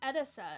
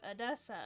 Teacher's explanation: edisa instead of adessa and I was like okay it's edisa like emphasis on the first syllable